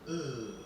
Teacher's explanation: That's an unrounded back closed mid vowel, meaning that it's like, it would be like O, but you don't round your lips.